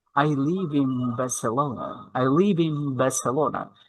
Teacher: when there will be B sound after N sound then the N sound will be M like M sound